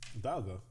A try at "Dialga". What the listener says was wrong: It's D. Technically Dialga. It's pronounced, it's spelled die, but it's pronounced D. The official Pokemon pronunciation. D.